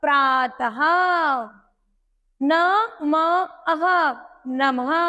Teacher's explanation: विसर्ग आते हैं, इनकी ध्वनि अह की तरह बोली जाती है। जैसे प्रा के नीचे रा, आ, ता, अह, प्रातः।